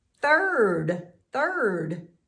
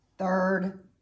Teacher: There's no voice, just air. With my tongue out, T-H. I-R-D.